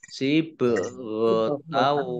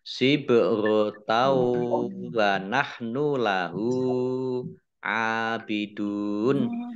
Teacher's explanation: fathah tanwin bertemu dengan huruf wawu, ini bacaan idgham bi gunnah. Idgham masuk bi dengan gunnah mendengung.